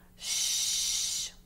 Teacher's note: It is definitely unvoiced. We feel it. We feel that breath.